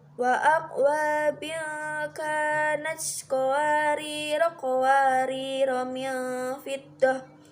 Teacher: Dan bila wasol, ro kedua-duanya dibaca pendek.